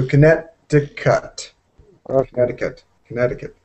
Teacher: you can't have the T like a d